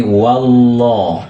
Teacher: Nah, bunyi lohnya itu, bunyi lam itu yang berbaris itu ditebalkan bunyinya. Makanya dalam bahasa tajwid namanya tafkhim, ditebalkan.